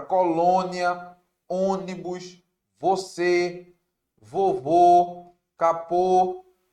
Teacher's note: o acento circunflexo que é o acento que fecha o som da vogal principalmente do é e do o · Já na palavra colônia, ônibus, você, vovô, capô, complô, o O é fechado por conta do acento circunflexo. Essa é a função desse acento, fechar os sons do E também do O.